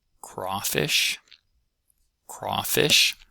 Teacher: crawfish is one of those uh kind of odd words that has about equal stress between the two halves. That thing is called a spondee.